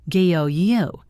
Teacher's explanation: Many English vowels are actually two sounds sliding into each other. The sound o in go is not a pure o. It is o sliding into u.